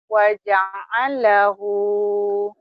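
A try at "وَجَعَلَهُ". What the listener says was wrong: waja'allahu, jangan digituin. Waja'alahu, ya jangan al. Kalau al ada tasdid. Ada kalau dihentak-hentak ada sidanya, lamnya dua.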